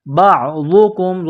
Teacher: بعضکم ضاد کو موٹا کرنا ہے، کاف کو میم کے ساتھ پلس کرنا ہے.